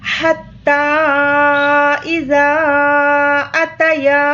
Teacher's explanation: یہاں پر بھی یا کو 3 الف کے برابر کھینچ کر پڑھیں گے، مد منفصل کا قاعدہ ہے۔